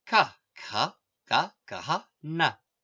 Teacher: For all these sounds, the points of pronunciation make full contact with each other. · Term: sparsa